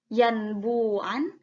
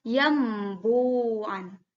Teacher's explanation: Jadi nunnya diganti menjadi m, n-nya diganti menjadi m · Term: iqlab